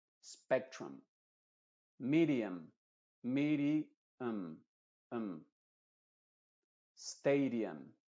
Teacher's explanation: las palabras que terminan en la U y la M, la U se pronuncia como una schwa.